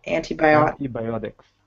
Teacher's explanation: that second T, it's surrounded by vowels, so it's pronounced like a D.